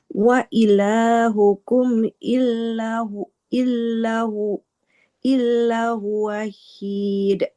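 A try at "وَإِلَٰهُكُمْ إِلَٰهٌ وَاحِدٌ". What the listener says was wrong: Hmm, nggak boleh ada tasydidnya, panjang pendeknya. Wa ilahukum ilahu wahid. Ila, lamnya nggak bertasydid.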